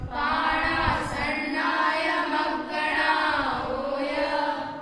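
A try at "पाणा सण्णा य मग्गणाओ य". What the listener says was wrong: मगणा ओय। इसको ब्रेक मत दो, मिला के बोलो।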